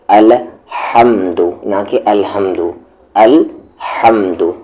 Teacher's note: اور یہاں پر ہا کے مخرج کو دھیان دے لے، اس ہا کا مخرج یعنی کہ ایگزٹ مڈل تھروٹ ہے